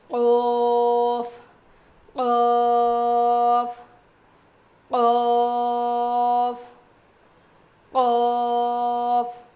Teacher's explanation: زبان کی جڑ اور اوپر کے تالو سے قوف ادا ہوتا ہے. تو جو ہماری چھوٹی زبان ہے نا, جو تالو ہے نا, وہ تھوڑا سا اوپر اٹھے گا جب ہم یہ پڑھیں گے.